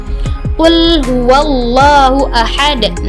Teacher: juga dibaca tebal Seperti apa Mari kita lihat yang pertama ialah lam dibaca tebal dan sebelumnya berharakat Fattah